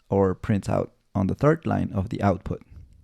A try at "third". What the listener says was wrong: Third line. So maybe in the TH, third, that may be a minor thing he could work on.